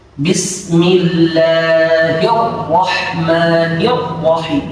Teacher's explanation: tidak ada takrir sama sekali, tidak ada getaran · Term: hasramah